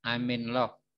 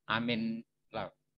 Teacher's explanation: Misalnya I'm in love, bukan I'm in, M dengan in-nya itu digandeng jadi min.